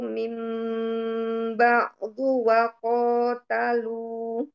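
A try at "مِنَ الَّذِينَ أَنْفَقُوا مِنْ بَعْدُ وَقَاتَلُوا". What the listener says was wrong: Di fa-nya bisa ditipisin lagi nggak? Minal ladzina ansaqu min ba'du wa qatalu. Ditipisin lagi.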